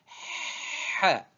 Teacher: Ha, ha, la sixième lettre, attention à la prononciation, ce n'est pas e, ce n'est pas he, c'est ha, ha. c'est un phénomène de frottement au fond de la gorge